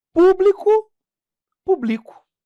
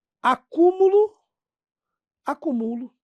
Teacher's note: palavras de classes diferentes que só vão se diferenciar pela posição do acento tônico